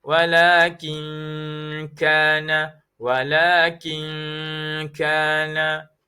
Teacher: Bertemu dengan huruf kaf, hukumnya ikhfa hakiki dibaca dengan dua harakat.